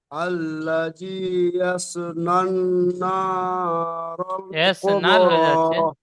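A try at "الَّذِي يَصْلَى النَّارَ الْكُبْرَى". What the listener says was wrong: এস নান হয়ে যাচ্ছে, এস নান হয়ে যাচ্ছে, এস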